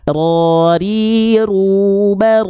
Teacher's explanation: Dia bergetar tapi bukan dengan karakter getaran yang berlebihan. Jadi getaran huruf ro itu sedikit saja. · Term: takrir